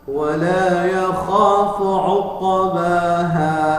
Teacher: Nah, jadi ainnya ketukar dengan alif, maka itu termasuk lahnul jari, kesalahan yang sifatnya fatal atau haram, ya.